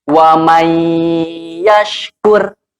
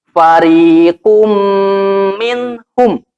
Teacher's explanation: Idgham Bighunnah ini dengan cara dimasukkan kemudian sambil ditahan